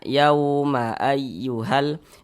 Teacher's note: Maka huruf ya bertasydidnya ini dinaber. Naber itu tekanan pada huruf-huruf tertentu, di antaranya pada huruf ya bertasydid, sehingga intonasi suara kita itu menjadi sedikit lebih tinggi dibandingkan dengan huruf-huruf di sampingnya.